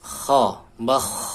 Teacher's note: untuk nafasnya dia mengalir, suara juga mengalir, ar-rakhawah, al-hamas. Kha, bakh. Jadi ada suara dan nafas yang mengalir.